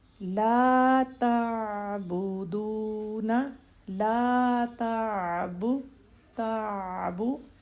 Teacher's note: ساکن لیٹر با کی پیش کی نسبت زیادہ ٹائم لے گا، تھوڑا سا زیادہ۔